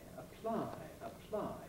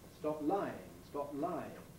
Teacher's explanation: the way you hear that aspiration is in the voicelessness of the following consonant the l or it would also apply to an r or